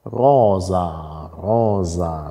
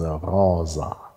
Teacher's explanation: bei der Rose erkennen Sie, es heißt Rosa, Rosa, mit stimmhaftem S, Rosa. Also zwischenvokalisch haben wir stimmhaft und stimmlos.